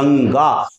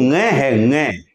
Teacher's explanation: ध्यान रखें यह नासिक के ध्वनि है और इसका उच्चारण ड नहीं है बल्कि लगभग ऐसा उच्चारण है इसका नग मत बोल देना इसे